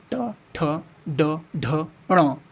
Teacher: सारे के सारे मूर्धा, जबान को लपेट के